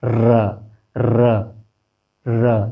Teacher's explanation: 2 अवयव, 2 अंग मुख के अंदर स्पर्श कर रहे हैं। र, र, र, देखिए गालों के आसपास, और जिह्वा थर्रा के आवाज़ निकाल रही है।